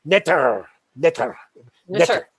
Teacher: And I can't even pronounce it the way he would, because he would, like a Frenchman, really roll the R